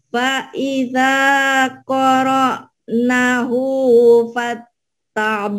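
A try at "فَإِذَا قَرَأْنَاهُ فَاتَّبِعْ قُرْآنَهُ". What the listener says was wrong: Nanya panjang. Faida qara'na. Ada madasli. Faida qara'nahu fattabi' Qur'anah.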